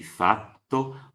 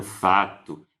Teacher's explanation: Então aqui, lá embaixo, vocês estão vendo 2 palavras diferentes do italiano, fato e fatto, onde a gente está vendo, pela escuta, que o T da segunda palavra é mais longo que o primeiro